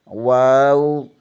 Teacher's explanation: ہونٹوں کو گول کرنے سے واو ادا ہوتا ہے